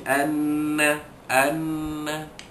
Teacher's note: nun tashdid, didengungkan pada keadaan dua harkat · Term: wajibul gunnah